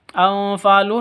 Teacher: nun mati bertemu dengan fa samar didengungkan, siap-siap huruf fa-nya atau ke huruf ikhfa hakikinya, karena ini disebut dengan ikhfa hakiki.